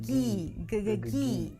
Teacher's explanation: the tongue pulls back for the G and then forward for the high E.